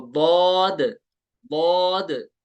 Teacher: जुबान की करवट और ऊपर के दाढ़ों की जड़ से, विजडम टीथ के साथ जुबान के साइड्स लगेंगे, तो दौद, दौद, ये साइड्स ऑफ द टंग लगाने हैं वहां से, और दौद को भी पुर पढ़ना है, ठीक है, और तीन अलिफ तक खींचना है।